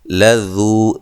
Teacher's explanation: ذال کو نرم ادا کرنا ہے، باریک پڑھنا ہے